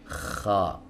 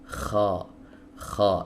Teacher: Huruf kha di sini keluar dari tenggorokan bagian atas.